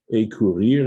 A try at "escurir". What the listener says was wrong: And by the way, you do pronounce the S, it's escurir. did, if they replace the S with an accent aigu, then it's a career. And that's usually showing that the S is gone.